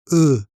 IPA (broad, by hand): ø